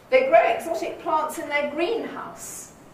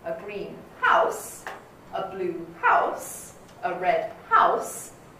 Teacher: the nucleus turns up on the first element of the compound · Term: compound noun